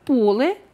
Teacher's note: поле в однині наголос падає на «о» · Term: рухомий наголос